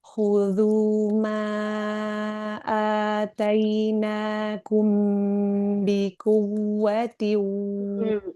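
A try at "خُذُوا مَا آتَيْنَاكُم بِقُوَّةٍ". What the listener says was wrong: Ada nabar. Waw tasydid di kuwa. Tapi setiap waw tasydid tapi syaratnya Al-Quran Madinah ya. nabar. Nah, maka nanti suara akan ditinggikan, dinaikkan suaranya, menaikkan suara dan suaranya tentu akan lebih tinggi dibanding huruf-huruf sebelumnya.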